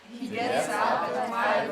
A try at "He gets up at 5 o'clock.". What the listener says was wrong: Gets. You're saying gates. Listen. Gets up. Gets up. He gets up.